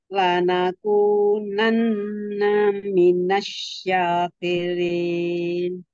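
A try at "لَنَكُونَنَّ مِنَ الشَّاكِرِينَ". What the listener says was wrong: Ya.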